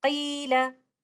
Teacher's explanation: you can hear that I'm extending the sound here due to the presence of letter ya as a mad letter